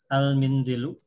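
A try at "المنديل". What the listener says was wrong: Huruf dal itu, huruf dal. Ya, al-mindilu.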